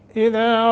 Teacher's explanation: दाल के आगे अलिफ है, 1 सेकंड की मद होगी।